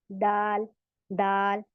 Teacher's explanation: जबान की नोक ऊपर दांतों की जड़ में लगती है तब हमारा दाल अदा होता है · आपकी जबान उठ रही है और कहाँ लग रही है? सामने ऊपर के दांतों की जड़ में लग रही है, बल्कि हल्की सी दांतों पे भी टच हो रही होगी।